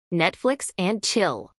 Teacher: acentuación en la primera sílaba